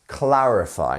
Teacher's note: clarify three syllables here and the stress is on our first one